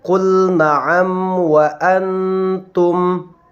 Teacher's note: Maka idhar syafawi adalah apabila ada mim sukun bertemu dengan semua huruf hijaiyah terkecuali mim dan ba. Maka cara membacanya adalah dengan memperjelas bunyi daripada mim sukun tersebut.